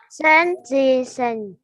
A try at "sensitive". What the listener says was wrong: Em không nhìn thấy chữ V à? Thì em phát âm giống như chữ V ở trong Việt Nam thôi. Sensitive.